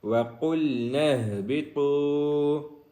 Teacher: قاف کو موٹا کریں گے، آگے ہا ہے وہ سینے والی ہا ہے، ہا نہیں ہے بلکہ ہا ہے، اس کو سینے سے نکالیں گے